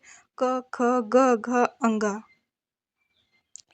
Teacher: ये सारे कंठ से निकलते हैं